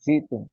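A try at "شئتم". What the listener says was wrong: এটা পেশ না তো, এটা তো উপরে ওই হসন্ত।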